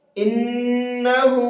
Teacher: نون کے اوپر تشدید ہے، غنہ کریں گے، اور ہا کے اوپر الٹا پیش ہے تو اس کو کھینچ کر کے پڑھیں گے